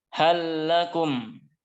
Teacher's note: Kemudian bawahnya halakum. Halakum itu lam bertemu dengan lam. Ya. Dibaca dengan idgham kamil sempurna. Lam yang pertama dimasukkan ke lam yang kedua.